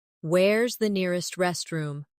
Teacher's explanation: Where is the nearest restroom? In fast speech, where is sounds like where's.